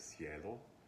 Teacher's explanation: when I have a ke before an e, it became so soft or palatized over time that it shifted into a s sound in Spanish.